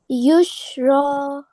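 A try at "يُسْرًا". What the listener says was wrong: This is seen, not sheen.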